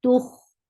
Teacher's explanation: Kha will get sifa of raqawa and it is heavy